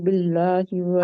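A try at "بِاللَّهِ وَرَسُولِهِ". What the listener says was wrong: आ को आपने अब क्यों नहीं खींचा? आ को क्यों नहीं खींचा आपने? क्योंकि मद लेटर है, वो मद है, उसके ऊपर खड़ी जबर है ना।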